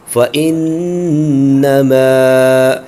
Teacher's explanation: میم کے ساتھ الف ہے تو میم کو ایک الف تک کھینچ کے پڑھا جائے گا